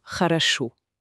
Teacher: un o non accentué, ça va sonner plus comme un a très bref ou un e léger · Le premier O devient A, le deuxième aussi, et seul le dernier O, celui qui est accentué, est prononcé pleinement O. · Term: réduites